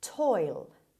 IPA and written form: tɔɪl (toil)